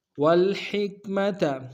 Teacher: ہا کاف کے سامنے آئیں گے، نرمی سے ادا کریں گے